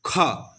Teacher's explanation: आप ख बोल के देखिए ख हवा देखिए निकल रहा है ख हवा के साथ जो शब्द निकले उसे क्या बोलते हैं तो महाप्राण